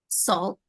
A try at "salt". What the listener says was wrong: Try to curve your O more. So instead of salt, sold.